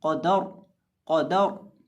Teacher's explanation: जो दरमियान में दाल है इसको मोटा नहीं करेंगे, इसको बारीक पढ़ा जाएगा